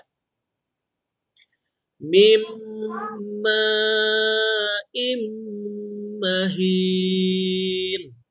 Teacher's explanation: jadi pada saat ditahan kedua bibir merapat